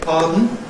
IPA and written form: ˈpɑːdn̩ (pardon)